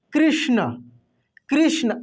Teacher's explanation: ये श का उच्चारण पूरा अंदर से आएगा तलब स के जैसे नहीं आएगा ये मूर्धन्य श बिल्कुल अलग है दोस्तों एक बात बताइए आप